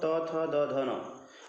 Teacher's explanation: हमारी जीवा जो होती है वो दांत से टकराती है दंत से टकराती है तो इसलिए इनका उच्चार स्थान दंत माना गया है और ये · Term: दंत उच्चार स्थान, दंत्य